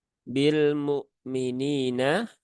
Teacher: huruf ba itu dia tidak ada sifat hamsnya